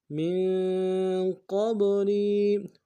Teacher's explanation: ساکن میں اخفا ہوگا، قاف کو با کے ساتھ ملانا ہے، قاف کو موٹا ادا کرتے ہوئے با کے ساتھ ملائیں گے، با حرف قلقلہ میں سے قلقلہ کریں گے ، اور لام کو یا کے ساتھ ملانا ہے، یا مدہ · لام کو یا کے ساتھ ملانا ہے، یا مدہ ایک انداز میں کھینچیں گے